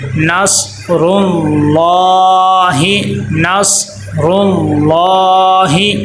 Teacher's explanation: لفظ اللہ کو موٹا کر کے پر کر کے پڑھیں گے